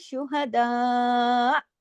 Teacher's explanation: اگر رکتے ہیں تو حمزہ کی آواز گلے میں آنی چاہیے، لیکن مد کا حق پورا ہوگا